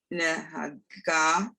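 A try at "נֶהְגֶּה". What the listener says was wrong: Ignore the hey. It's silent with the vowel there.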